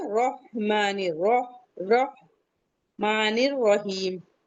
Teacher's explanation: जितने भी रा हैं सब मुफसखसम पढ़े जाएंगे। हैवी पढ़े जाएंगे।